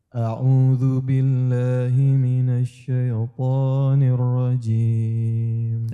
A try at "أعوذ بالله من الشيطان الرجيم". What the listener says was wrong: Sama syai, ya-nya tidak boleh ditebalkan syaitan ya.